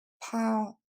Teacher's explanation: il va falloir le couper après le son ow que vous retrouvez dans now ou how